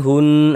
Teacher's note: Ya, ini hun. Nah, hunnya itu kita tahan sejenak, suaranya kita panjangkan. Hunnya yang kita panjangkan, bukan nanya. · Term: gunnah musyaddadah